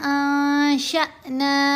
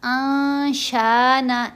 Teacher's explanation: वलाकिन्ना अंशअना, शीन को हमने हमज़ा साकिन से यहाँ मिलाना है। शीन को हमज़ा साकिन से जब मिलाएंगे तो झटका देंगे, आवाज़ में जर्क पैदा होगा। अब हमने यहाँ आशाना ऐसे करके नहीं पढ़ना।